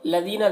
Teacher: ذال کو باریک پڑھیں گے اور یہاں پر یا مدہ ہے